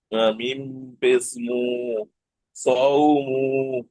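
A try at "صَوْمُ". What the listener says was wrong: টান দিচ্ছেন কেন? টান হবে না। সদ ওয়াও জবর সৌ, মিম পেশ মু, মু টান দেওয়া যাবে না। মিম পেশ মু, একদম সৌমু।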